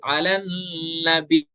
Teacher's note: یا کو 2 بار پڑھیں گے لیکن یا کی زیر کو نہیں پڑھیں گے، بس شارٹ حرکت ظاہر نہیں ہونی دینی ہے.